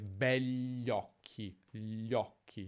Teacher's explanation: Nella pronuncia è più comune dire begli occhi, gli occhi, senza dire quella I praticamente